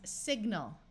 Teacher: Like here we have the word sign with a long I and a silent N, and we add the suffix al and it becomes signal. Most of the time, AL at the end of a word takes on the muffled ul sound